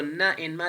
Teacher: when we are producing ma and na, the air is coming out through our nostrils. So they are nasal sounds.